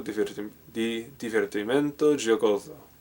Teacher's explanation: I think Italian does a thing where if S is between two vowels, it's a Z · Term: Z sound